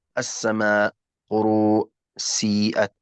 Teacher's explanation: المد الواجب المتصل يا كرام في رواية حفص عن عاصم مقداره 4 أو 5 حركات، لا نقول 4 إلى 5 يعني يكون 4 ونصف هكذا، لا، إما 4 حركات أو 5 حركات.